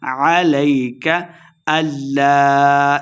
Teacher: علیک اللہ لام مشدد آ گیا، حمزہ کو لام کے ساتھ ملانا ہے